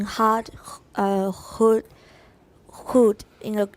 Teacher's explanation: in a creaky voice these three vowels have overtones with a steadily decreasing pitch